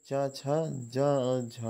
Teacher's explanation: तालव्य व्यंजन हैं तालु वाले, तो ये चा छा जा और झा है